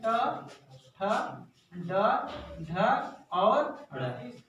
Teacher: ये सब कहाँ से बोले जाते हैं? मूर्धा की सहायता से बोले जाएंगे। सर कहेंगे ये मूर्धा क्या होता है, तो मैं बताना चाहूंगा गाइस, ये आपके ऊपरी भाग में जो दांत है उसके पीछे, जस्ट पीछे आपको कुछ इस तरह जीभ टच करेंगे तो ऐसे ऐसे लगा खिंचा हुआ महसूस होगा, उस स्थान को मूर्धा कहते हैं।